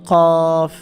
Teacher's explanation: জিব্বার গোড়া থেকে উচ্চারণ করতে হবে এটা